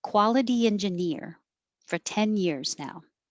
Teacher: 10 years now quality that t changes to a d and engineer the stress is on ear